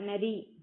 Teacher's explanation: நரி அப்படிங்கும்போது அந்த நாக்கு ஆட்டோமேட்டிக்கா பல்லோட அடிப்பகுதியை போய் தொடும். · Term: நகரம்